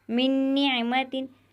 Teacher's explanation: نون ساکن کے بعد یہاں پر نون آیا ہوا ہے تو یہاں پر گننا ہوگا، یعنی ادغام ہوگا، گننے کے ساتھ اس حرف کو ہم ادا کریں گے